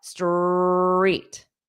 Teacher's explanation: when you say street, you want to pronounce the ST quickly and then hold out the R.